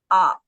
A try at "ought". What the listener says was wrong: Ought. Ought. It's not out. We don't say out. Do we say that? We said ought. Ought.